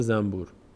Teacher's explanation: به جای این نون ما میم تلفظ می‌کنیم این نون تلفظ نمیشه این نون تبدیل شده به میم بعد